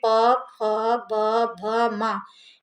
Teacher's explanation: ओष्ठ का मतलब कि जिसमें दोनों होंठ हमारे बंद हो जाएं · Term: ओष्ठ ध्वनि